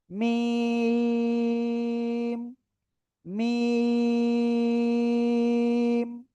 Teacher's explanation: চার আলিফ টেনে উচ্চারণ করব, দুই ঠোঁটের শুকনো জায়গা থেকে।